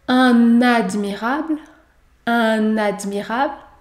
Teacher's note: une liaison obligatoire après le déterminant